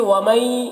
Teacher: یہاں پر مئی میں ادغام ناقص ہو رہا ہے، غنہ کے ساتھ میں پڑھیں گے